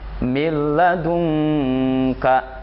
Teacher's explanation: suara nun matinya, suara tanwinnya tidak terdengar sama sekali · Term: idgham bila gunnah